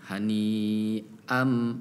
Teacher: Nah itu harus dibaca jelas hamzahnya. Hani'am, agak sedikit jeda untuk memindahkan kalimat ya dengan huruf hamzah